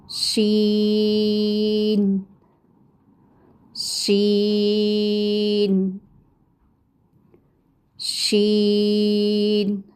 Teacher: शीन का मखरज भी ऐसा ही कि ज़बान के दरमियान के हिस्से को तालू की तरफ बुलंद करते हैं तो बारीक और फैलती हुई आवाज़ निकलती है।